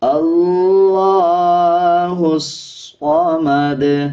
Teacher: ہا کو صاد کے ساتھ ملا کے پڑھا جائے گا اور صاد موٹے حروف میں سے آتا ہے، اس کو پر یعنی موٹا پڑھا جائے گا۔ ہا کے بعد جو الف اور لام ہے اس کو سکپ کر دیں گے، ہا کو صاد کے ساتھ ملا کے پڑھیں گے، وقف کرتے ہوئے دال پہ قلقلہ کیا جائے گا۔